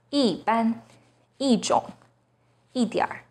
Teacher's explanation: When 一 is followed by a non-fourth tone, it becomes the fourth tone